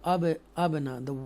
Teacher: So abana, this ba is one of them because this ba is sakina ba. Okay, and we read with echo sound.